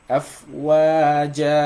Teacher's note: We're going to cancel one of the fatha and pronounce the jim with one alif med. Afwaja. This is called mad al-iwad, and it's one of the mad tabi'i.